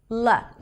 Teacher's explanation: In Mandarin Chinese, there is the L sound. I call it the ultra light L where the tip of the tongue touches the upper pallet